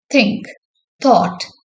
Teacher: Ith is a voiceless dental fricative.